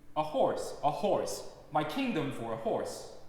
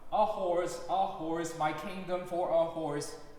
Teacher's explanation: my, and for needs to be short and soft for these accents to pop out. Otherwise, it just sounds like always loud.